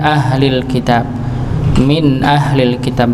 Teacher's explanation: Pada pembacaan min ahlil kitab maka dibaca jelas, di sini ada hukum bacaan idhar, idhar halqi, ya. Ada nun sukun bertemu dengan hamzah maka dibaca jelas